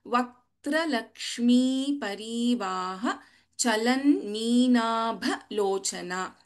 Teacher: भ इज महाप्राण in the second line